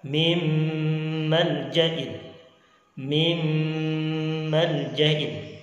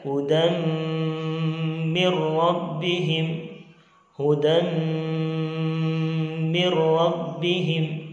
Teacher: Itulah contoh-contoh idgham bi gunnah. Proses memasukkan huruf yang satu ke dalam huruf yang lainnya dengan disertai gunnah. Ukuran gunnahnya adalah 2 sampai 3 harokat.